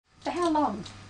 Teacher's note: This is a question too, but it has a falling tone. A falling tone is used with information questions.